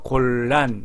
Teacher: 니은과 리을이 만나면 말할 때 니은이 리을로 바뀝니다. 리을이 유음이라고 하기 때문에 이거를 유음하라고 합니다.